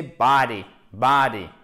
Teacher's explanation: L'accentuation, elle se fait sur la première syllabe. Donc, c'est une voyelle longue et c'est pas body, ok? C'est entre le A et le O, c'est plus proche du A